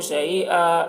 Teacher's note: یہاں پر وقف کریں گے تو ایک زبر کے ساتھ الف پڑھا جائے گا